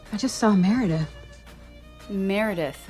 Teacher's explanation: The tongue never flaps for the R in American English, so it does not bounce against the roof of your mouth. It should be pulled back a little bit.